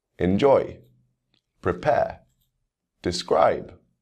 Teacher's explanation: you can hear the stress on that second syllable